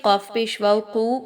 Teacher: واو مدہ 2 حرکت کے برابر لمبا کر کے پڑھیں گے